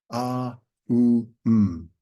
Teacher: And the face, all that's changing is the lips.